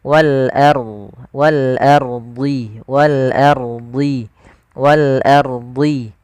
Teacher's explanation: Kemudian wal ardi, ini ada alif lam qamariyah yaitu alif lam yang tertulis tapi dia dibaca huruf lamnya dengan jelas. Wal ardi, ro-nya di sini ada hukum tajwid berupa ro tafkhim, jangan wal ardi, tapi dia ro tebal.